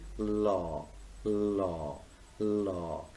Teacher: the first sound, law, is lateral liquid because it is created almost in the region of alveolar ridge · the tongue makes contact with the middle of the alveolar ridge